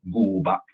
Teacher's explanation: But then beef, we say gu ba. So the rising tone becomes a flat low tone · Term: sandhi tone